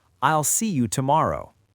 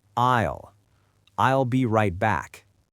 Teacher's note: It's a very lazy dark L sound at the back of the throat.